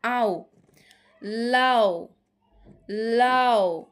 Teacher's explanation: পূর্ণ স্বরধ্বনি অর্ধস্বরধ্বনি একত্রে উচ্চারিত হয়ে দ্বিস্বরধ্বনি হবে